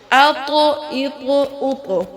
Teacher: اب یہ طا ہے، اس کو ہلانا ہے کیونکہ یہ حروف قلقلہ ہے، اور یہ موٹا پڑھے جانے والا حروف بھی ہے، حروف مستعلیہ ہے